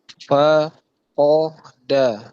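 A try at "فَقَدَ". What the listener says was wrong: Ahsant. Lanjut.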